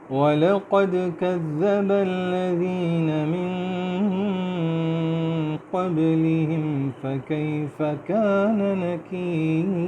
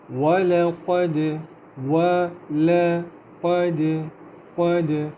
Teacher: اللہ تعالیٰ فرماتے ہیں اعوذ باللہ من الشیطان الرجیم بسم اللہ الرحمن الرحیم وَلَقَدْ كَذَّبَ الَّذِينَ مِن قَبْلِهِمْ فَكَيْفَ كَانَ نَكِيرِ وَلَقَدْ قد وا پتلا ہے، واو میں ہونٹوں کو گول کریں گے، لام بھی پتلا ہے، قاف جو ہے وہ تھوڑا موٹا کر کے پڑھیں گے اور دال پہ باؤنس کریں گے